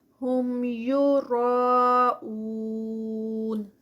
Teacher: را جو ہے یہ ہیوی ہے پیچھے کیونکہ زبر کے ساتھ آ رہی ہے. اون یہ بھی 4 کاؤنٹس پہ.